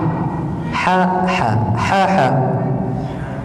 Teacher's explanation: Ha termasuk dari huruf wasatul halqi, yaitu keluarnya huruf dari tenggorokan bagian tengah.